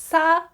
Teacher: normally the pronunciation of this consonant is a sharp s kind of like a snake